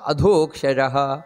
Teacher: ಅದೋಕ್ಷಜಹ ದ ಅನ್ನುವುದು ಮಹಾಪ್ರಾಣ